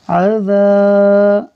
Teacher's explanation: عین زبر ع، ذال الف زبر ذا، عذا، عین کو حرکت کی وجہ سے نہیں کھینچا اور ذال کو الف مدہ کی وجہ سے کھینچا ہے